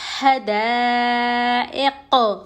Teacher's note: قوف پر ہم جزم دے کے سانس توڑیں گے تو یہ قلقلہ ہو جائے گا کیونکہ قوف حرف قلقلہ میں سے ہے.